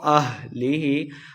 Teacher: ہاں کو حلقے نچلے والے حصے سے پڑھنا ہے